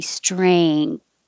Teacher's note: the back of your tongue goes up for the ng string and then the tongue has to come forward for the